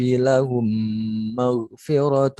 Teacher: mim sukun bertemu mim tasdidnya ini dibaca dengan tasdid ya, seperti membaca dengan tasdid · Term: idgham misli